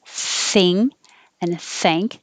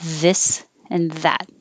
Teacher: in this case the voiceless th thing and thank and the voiced th this and that